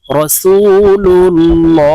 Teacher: যখন ওয়াকফুর ক্ষেত্রে এখানে থামবো তখন এভাবে শব্দটি বলতে হবে রাসুলুল্লাহ এই হাকে ওয়াকফের ক্ষেত্রে সাকিন করে ফেলতে হবে